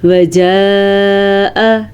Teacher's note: یہ والی جو مد ہے یہ 5 الف کے برابر ہے، اور اس کو ہم 5 سیکنڈ تک لمبا کریں گے